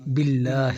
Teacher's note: لفظ اللہ کو موٹا نہیں کرنا کیونکہ لفظ اللہ سے پہلے با کے نیچے زیر ہے